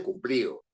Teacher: Esa palabra es una palabra grave porque su fuerza de voz está en pli. Uno no dice cumplido ni cumplido, uno dice cumplido.